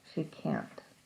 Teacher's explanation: both of these words can't and can are both pronounced with the full vowel